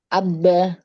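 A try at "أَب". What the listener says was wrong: Jangan terlalu ditekan. Abbe. Jadi bukan abe, abe, bukan abe, tapi abbe. Jadi kayak ada tasdid tapi enggak. Cepat, lebih cepat. Kalau tasdid kan ada tasdid, bedanya dia ditahan sukun yang pertamanya kan ditahan, baru qalqalah, gitu ya. watabbe, tabbe, watabbe. Nah, kalau itu yang banyak tasdid, maka ditahan sebentar kan? Watabbe. Nah, kalau dia nggak ada tasdid, langsung qalqalahnya.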